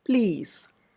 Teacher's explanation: P is a voiceless sound, voiceless consonant, and under the influence of that voiceless sound, P, the L, which is by itself a voiced consonant, loses its voiced quality and it becomes more of a voiceless or a devoiced consonant.